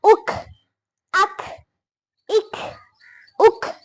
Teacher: قاف، کوے کے متصل زبان کی جڑ جب اوپر کے تالو سے لگے تو قاف ادا ہوتا ہے۔ کاف، قاف کے مخرج کے قریب منہ کی جانب ذرا نیچے کی طرف کاف ادا ہوتا ہے